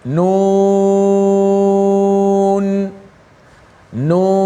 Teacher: Ejaan ada nun, waw, nun. Maka kita baca dengan menyebut namanya dan dipanjangkan sebanyak 6 harakat.